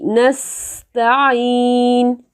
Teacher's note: سین کے اوپر آواز سیٹی کسی پیدا ہوگی